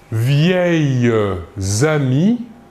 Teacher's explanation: Ici, l'adjectif vieille termine par la lettre S et le substantif commence par la lettre A. Nous effectuons donc la liaison entre le S et le A.